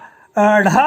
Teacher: झटके के साथ जो जीवा नोक का स्पर्श लगभग हमारे मसूड़ों में होता है। ठीक है, ऊपर के जो मसूड़े हैं और झटके से इनका उच्चारण होता है। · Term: उत्क्षिप्त व्यंजन